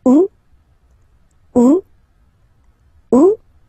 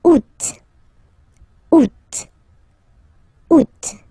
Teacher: you don't pronounce the final T.